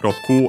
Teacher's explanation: 6 on its own, Roku, accent on the last mora.